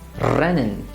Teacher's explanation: in some dialects people literally roll the r. That means they produce it in the front of the mouth